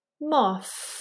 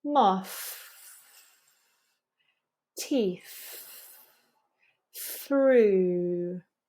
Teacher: notice that I'm blowing the air out while I'm touching my tongue tip on the edge of my upper teeth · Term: voiceless th, voiceless TH